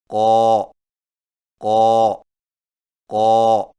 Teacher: قاف کی ادائیگی میں زبان کی جڑ کو کوے کے متصل تالو پر لگائیں